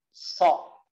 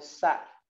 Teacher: Ujung lidahnya turunin ke bawah, suaranya menebal dan menutup. So. Jadi so, ujung lidahnya turunin.